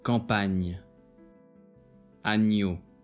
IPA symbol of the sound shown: nj